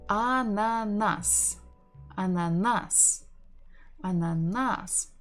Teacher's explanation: We stress the final syllable.